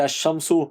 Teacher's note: اب number 6، number 6 میں الف لام جب ایسے لفظ پر داخل ہو جس کا پہلا حرف شمسی ہو تو الف لام کا لام حرف شمسی میں مدغم ہو جاتا ہے، یعنی تلفظ کے وقت لام کے بجائے حرف شمسی ہی کا تلفظ ہوتا ہے